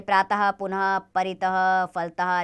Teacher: विसर्ग का चिन्ह दो बिंदु के रूप में दर्शाया जाता है। इसका उच्चारण हल्के हौ की भांति होता है।